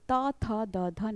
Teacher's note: त वर्ग के सभी व्यंजनों का उच्चारण स्थान दंत कहलाता है